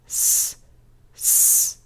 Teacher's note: ¿Vibran tus cuerdas vocales? No, no vibran. Entonces nos da un sonido sordo.